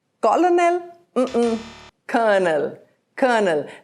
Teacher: And this is in British English, they pronounce it colonel, and in American English, it is colonel. Notice that the first L is silent.